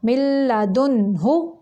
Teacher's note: من لدن، ہو نہیں کرنا، مل، میم زیر لام، مل لام زبر لا، مل، اب یہ لام ہے مل، ادھر غنہ نہیں کرنا، ادھر صرف ملانا ہے میم کو لام کے ساتھ اتنی دیر کہ 2 لاموں کی ادائیگی ہو جائے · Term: ادغام بلا غنہ